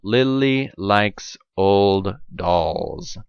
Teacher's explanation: the tip of your tongue touches the alveolar ridge but then your breath moves around the tongue around the blade of the tongue around the sides of the tongue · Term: alveolar approximant